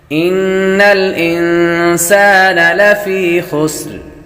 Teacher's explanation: یا حروف مدہ میں سے ہے اس لیے حروف مدہ کو ایک الف یعنی دو حرکات کے برابر کھینچ کر پڑھتے ہیں